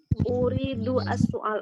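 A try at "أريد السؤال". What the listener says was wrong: Pakai hamzah. Soal. Soal. Bukan pakai ain, tapi pakai hamzah. Soal. Soal.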